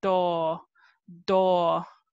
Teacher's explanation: the tip of your tongue is touching the top part of your teeth right behind your two front teeth